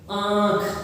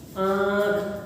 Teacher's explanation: जैसे आंख, ध्यान दीजिए, देखिए, ठीक है ना। आंख देखिए, नासिका से भी ध्वनि निकल रही है, मुंह से भी आ रही है। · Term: अनुनासिक